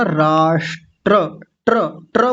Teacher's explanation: र को पूरा बोलना है। र पूरा होता है यहां पे।